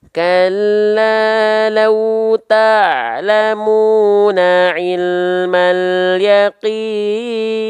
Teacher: mad arid disukun itu saya baca dengan kadar panjang 4 harokat. Jadi nggak terlalu kepanjangan.